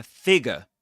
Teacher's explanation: You don't pronounce that R sound or that R letter.